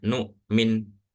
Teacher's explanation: ketika wakaf mimnya itu enggak dibaca panjang